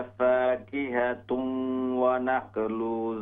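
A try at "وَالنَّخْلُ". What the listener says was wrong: वन फाकिहतुन वन नख्लु वन देखें नून पर शद है। वन नख्लु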